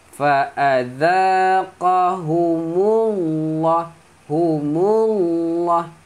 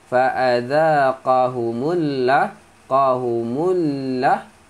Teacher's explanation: Maka sebutan Allah tu kena tebal.